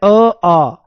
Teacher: कंठ से निकला। अ आ का उच्चारण स्थान क्या है? कंठ है। कंठ। कंठ मतलब गला। · अ आ कहां से निकला? कंठ से निकला।